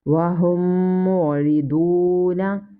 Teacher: After mim sakina, here comes another mim. So here is idgham shafi. We will read with gunna and waw madda.